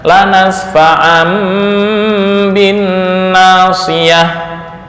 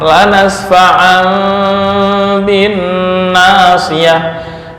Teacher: ketika ada tanwin bertemu ba atau mim bertemu ba, ada rongga sedikit di antara dua bibir